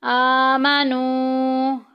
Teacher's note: آ کے اوپر دیکھیں کھڑی زبر آ گئی، ایک الف کے برابر لمبا کریں گے۔